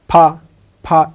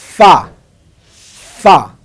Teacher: মনে রাখতে হবে ফা উচ্চারণ করতে উপরের 2 দাঁত নিচের ঠোঁটের মাঝখানে লাগবে, তাহলে আমার ফা উচ্চারণ হবে।